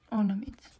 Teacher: Vurğu ikinci anın üzərinə düşəcək. Ornament. Bura düşəcək.